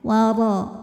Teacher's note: Huruf ra dibunyikan secara tafkhim karena ro-nya berbaris fathah, maka dibaca tebal. Cara menebalkannya adalah dengan mengangkat pangkal lidah.